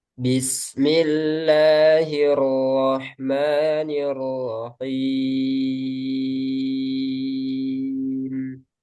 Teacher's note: Mim sukunnya jangan terlalu panjang ya. Ee alirannya ada tapi sedikit aja.